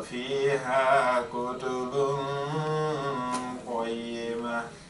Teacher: So we do al-ikhfa. So the tip of the tongue wants to go up. We hold it in the middle of the mouth. And then we apply al-ghunna.